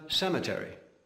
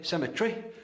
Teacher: Americans tend to pronounce words with a far more even emphasis than the English